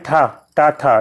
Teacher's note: और अघोष जो है अघोष पहले और दूसरे वाले। तो यहाँ पे ठा टा ठा दूसरे नंबर पे है, तो ये अघोष हो जाएगा और महाप्राण भी होगा